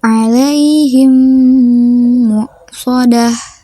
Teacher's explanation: Cara membaca idgham mimi yaitu dengan menyuarakan mim rangkap atau ditasydidkan dengan wajib dibaca dengung